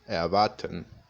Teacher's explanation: hay veces que la R también puede sonar como sonido de A